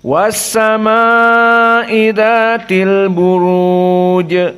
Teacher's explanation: mad jaiz munfasil tawassut dan mad wajib muttasil seperti as-sama dibaca tawassut, hanya sekedar 4 saja.